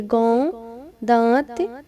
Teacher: अनुस्वार बिंदु और अनुनासिक चंद्र बिंदु अलग अलग ध्वनियाँ हैं। अनुनासिक के उच्चारण में नाक से सांस बहुत कम निकलती है और मुख से अधिक